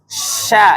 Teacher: syin Tengah lidah bertemu dengan langit-langit atas